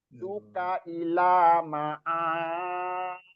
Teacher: jadi ro-nya panjang, itu harus 6 harokat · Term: mat lazim musakol kalimi